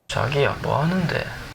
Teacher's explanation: But the end of his sentence doesn't go down very much compared to a normal question.